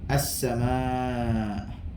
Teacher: Macam mana kita nak mendengar hamzah ni? Suara kita akan tertahan. As-sama'. Ada tahanan pada situ. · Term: huruf hamzah